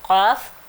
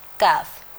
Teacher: جو 2 ڈاٹس والا ہے یہ موٹی آواز والا ہے اور جو اسٹک والا کاف ہے وہ باریک آواز والا ہے. اس کو کی کی آواز نہیں آئے گی کا کی آئے گی.